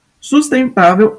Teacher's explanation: sustentável é paroxítona é é a penúltima sílaba que ela é a sílaba mais forte a sílaba tônica